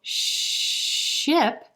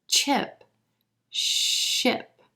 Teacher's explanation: SH is continuous. The air is going to flow continuously.